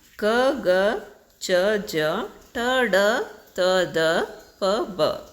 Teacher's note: ವರ್ಗ ಟ ವರ್ಗ ತ ವರ್ಗ ಪ ವರ್ಗ ಅಂತ ಒಟ್ಟು 25 ಅಕ್ಷರಗಳು ಅಲ್ಪಪ್ರಾಣ ಅಕ್ಷರಗಳು ಉಚ್ಚರಿಸುವಾಗ ಕಡಿಮೆ ಉಸಿರು ಹೊರ ಬರುವ ಅಕ್ಷರಗಳು · ಉಚ್ಚರಿಸುವಾಗ ಕಡಿಮೆ ಉಸಿರು ಹೊರಬರುವ ಅಕ್ಷರಗಳು ಅಲ್ಪ ಪ್ರಾಣ ಅಕ್ಷರಗಳು ಅಂತ.